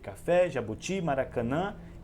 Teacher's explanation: é aquela palavra que tem a sílaba mais forte ou seja a sílaba tônica na última posição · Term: palavra oxítona